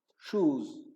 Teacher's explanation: When you call it shoes, it is Z in the end of it when you pronounce it instead of S.